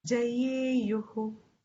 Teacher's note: Both of you are not chanting the visarga. Jayeyuhu, visarga is to be sounded.